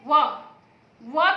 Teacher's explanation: व का उच्चारण किससे होता है? दांत और ओठ से। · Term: दंतोष्ठम